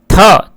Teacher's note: थ को जब उच्चारण करते हैं तो जीवा दांतों को स्पर्श करती है